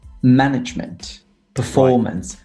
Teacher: management on the first syllable performance on the second syllable